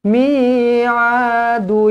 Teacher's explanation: kena rapatkan bibir dengungkan dua harakat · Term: Idam mlain